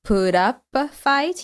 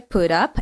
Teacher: Again, what happens is we have a T sound as the end of put, which is followed by the vowel, and that turns the T sound into a flap T, the sound, put up a fight.